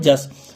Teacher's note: य के स्थान पर ज का प्रयोग होने लगा। जैसे कि यश है तो उसकी जगह पे जस।